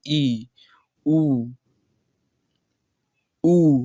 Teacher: संवृत स्वर कौन सा है, तो मुख लगभग बंद रहता है